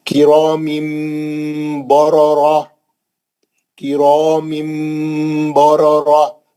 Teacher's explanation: کرام بررہ، کرام بررہ، میم کی تنوین جو تھی، تنوین کے بعد با تھا، اس نے چھوٹی میم لکھی ہوئی تھی، ہم نے میم کا غنہ کر کے پڑھا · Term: تنوین کا اخلاب